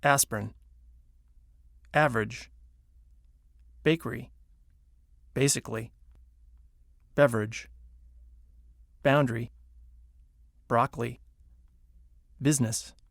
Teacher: syllables intonation can also completely get rid of certain entire syllables some longer words that are stressed on the first syllable squeeze weak syllables right out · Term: squeezed out syllables